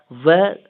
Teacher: दंतयोष्ठ व्यंजन व दो मिश्रित स्थानों से उच्चारित होता है